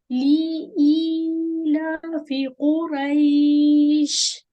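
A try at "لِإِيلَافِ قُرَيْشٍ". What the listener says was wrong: پہلے جو لی ہے نا اس کو کھینچے مت. اس کو صرف ایک کسرہ ہے. لام کسرہ لی اور دوسرا حمزہ کسرہ یا ای.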